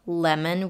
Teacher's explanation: it's pronounced just as a fruit, lemon, where the O is pronounced as a schwa, lemon, not lemon.